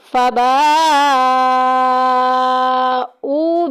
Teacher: او میں دیکھیں واو مدہ ہو رہا ہے، 1 الف کے برابر لمبا کریں گے